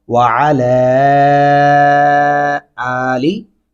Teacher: لام کے اوپر دو الفی مدہ ہے، ہم آواز کو دو الف کے برابر تک لمبا کرتے رہیں گے